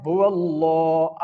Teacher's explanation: اب یہ لفظ اللہ کا لام موٹا ہوگا